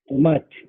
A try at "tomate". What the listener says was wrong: Tomat, very good.